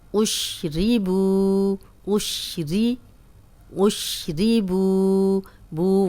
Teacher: بو واو مدہ ہے، جزم والی واو ہے، پیچھے پیش ہے با پہ، دو حرکات اسے لمبا کریں گے